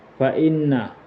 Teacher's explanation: gunna musyadda dikarenakan nun bertasydid